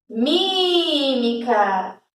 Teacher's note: Esse primeiro mi foi o que mais sobressaiu. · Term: sílaba tônica